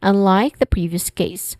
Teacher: it starts with the word unlike where un the first syllable is stressed and then like has a dip thong i sound.